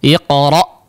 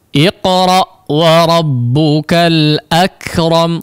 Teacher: Karena bukan seolah, karena memang terputus ya, memang karakternya seperti itu ketika diucapkan ya, apalagi ketika disukunkan iqra, memang putus ya, memang putus suaranya atau terjeda ya, terputus karena merapatkan antara kedua sisi makhrajnya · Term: huruf hamzah